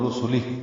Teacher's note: وقف کریں گے تو رسلہ را پر پڑھیں گے اور سین سیٹی جیسی آواز سے.